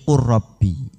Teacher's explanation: Lam sukun bertemu ro maka dibaca idgham atau lamnya hilang menjadi ro dinamakan idgham mutaqariben.